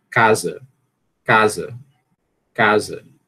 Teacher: na palavra casa, a sílaba tônica é a primeira. Casa, a gente percebe que o A, que esse A, ele tem mais energia, tem maior duração, tem maior volume, né?